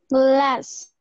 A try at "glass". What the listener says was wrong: Otra vez me marcaste la t al final. Glass.